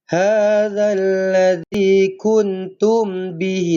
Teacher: Nun kosong bertemu dengan ta, ikhfa hakiki. Dengung dua harakat.